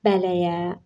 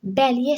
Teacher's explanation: Çünki sözün sonundakı əgər açıq sait gəlibsə, ona saitdən başlayan söz artıranda sözün kökündəki sondakı o açıq sait qapalı saitə çevrilir